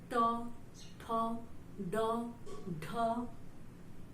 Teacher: मूर्धन्य में क्या होता है, जीभ थोड़ी सी टेढ़ी होती है